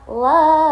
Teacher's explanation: La itu mad thobi'i. Alif dibaca dua harakat atau panjang.